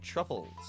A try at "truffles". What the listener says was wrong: I mean truffles. Truff. There's no CH there, buddy.